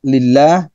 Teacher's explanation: Tarkik itu tipis ya. Lebih kepada vokal huruf A.